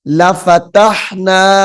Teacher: لفتح تا کو ہا کے ساتھ ملائیں گے